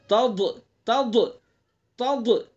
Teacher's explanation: ضاد کا مخرج زبان کی کروٹ سائڈ ہے، زبان کی کروٹ کو اوپر کی ڈاڑوں پر لگائیں گے، اوپر کی ڈاڑوں پر، تض، تو ڈاڑ کو جو ہے کروٹ کو زبان کی ڈاڑ پر لگائیں گے تو ضاد ادا ہو جائے گا.